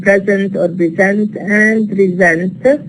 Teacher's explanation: So sa voiceless becomes za voiced because it occurs in an intervocalic position, that's to say between two vowels. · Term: intervocalic voicing